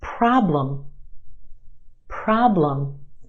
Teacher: two syllables in this word our first syllable is emphasized the ah problem is stretched and emphasized in the first syllable